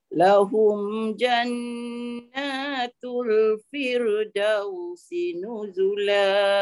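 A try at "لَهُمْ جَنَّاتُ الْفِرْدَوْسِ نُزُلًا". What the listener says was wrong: Dau jangan turun, jangan firdau. Itu jadi asli. Firdau, firdausi nuzula. Turun juga dau tu. Dau tu nanti turun juga. Firdau. Firdau. Turun juga. Firdau. Atas. firdau. Firdausi nuzula. Turun juga.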